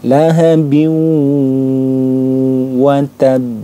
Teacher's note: bunyi Nun sukunnya ini yang dileburkan ke huruf wau lahabi jadi seolah-olah Nun sukunnya diabaikan kemudian dimasukkan ke huruf wahnya lahabi kemudian didengungkan yang dipanjangkan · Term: idgham bighhunah